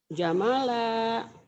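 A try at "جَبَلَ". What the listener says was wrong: Mana ada jamala? Jabala ya, bukan jamala. Kenapa jadi mim ya? Itulah kadang-kadang antara mata sama mulut belum sinkron.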